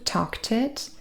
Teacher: we have a t and an I joining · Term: catenation